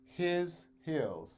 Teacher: be sure it starts with an h with a little bit of air in it